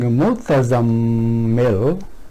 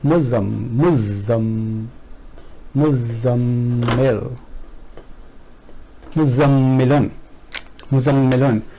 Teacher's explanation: these are merged together and za becomes double, so it becomes muzammil, muzammilun.